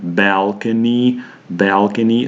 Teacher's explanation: there is an e sound as in the word sheet but it's not stressed it's an unstressed a sound at the end so when pronouncing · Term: unstressed E sound